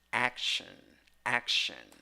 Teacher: even though you have T in the spelling or in the writing, you have sh in the pronunciation. And the vowel is schwa again. · Number 3, 6 letters, 5 sounds, 2 syllables. The first syllable is the stressed syllable. The vowel, ho, o.